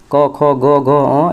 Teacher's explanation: ये सब जो है कंठ से होता है